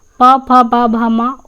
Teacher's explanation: प फ ब भ म उ तथा उ का उच्चारण स्थान ओट है अत ये ओट ध्वनियां है